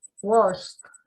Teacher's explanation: Aquí el sonido del verbo washed es como una T, washed. Entonces, cuando usted me lo pronuncia, tiene que exagerar ese sonido de esa T.